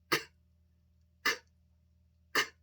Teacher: To make the K sound, k, k, k. The back of your tongue goes up, so that air cannot come out. But you let it down, and the air comes out.